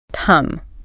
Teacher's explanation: the N and the G combine to make a nasal sound in the very back of your throat